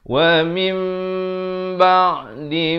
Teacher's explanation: Dibacakan dengan ditukarkan bunyi nun kepada bunyi mim. Jadi pada bunyi min jadi mim. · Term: hukum iqlab